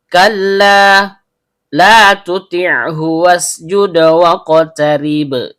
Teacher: Karena lamnya berharokat fathah diikuti alif layyinah, maka terjadi hukum bacaan mat tabi'i, panjang 2 harokat dan setiap panjang keluar dari rongga mulut.